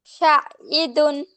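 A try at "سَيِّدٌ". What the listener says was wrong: না, শাইদুন না, ফোটা সিন, সিন, সিন হচ্ছে নরম করে, হ্যাঁ, সাইয়্যিদুন। আর সিন হচ্ছে শক্ত করে।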